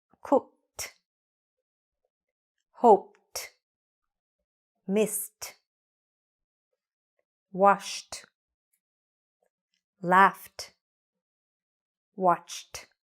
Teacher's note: f also words that end with ch sound or sh sound these are unvoiced there's very little vibration so for these kind of words we have a t or t sound at the end